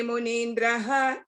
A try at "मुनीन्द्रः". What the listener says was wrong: I think that's where I think the Munindraha, when you said it, you suddenly lost your tune. So Munindraha.